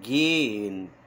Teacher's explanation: prolonga o E e não pronuncia o H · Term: som omitido